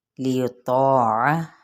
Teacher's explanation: من رسول، ادغام بلا غنہ، سو پہ واو مدہ، تنوین زیر پہ اظہار، الا الف مدہ، لیطاع الف مدہ لیکن طا پر ہے تو الف بھی اس کے ساتھ پر ہو جائے گا۔ عین کو وسط حلق سے ادا کرتے ہوئے اس کی زبر کو لمبا نہیں کریں گے۔